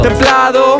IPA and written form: tem´plaðo (templado)